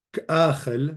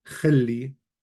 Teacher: it goes from k'achel, you hear the alep, to khilli, you no longer hear the alep